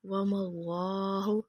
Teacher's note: دیکھیں لفظ اللہ سے پہلے زبر آ رہی ہے، اس لیے اللہ موٹا پڑھیں گے